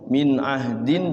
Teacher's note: ha-nya disukunkan dalnya di qolqolahkan